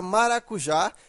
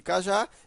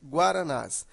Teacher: Porque ela é uma oxítona. Veja que a sílaba tônica é a última. Então, ela é uma oxítona e ela terminou em a.